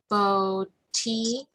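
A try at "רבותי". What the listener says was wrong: So it would be I at the end. So it would be Rabotai. Rabotai.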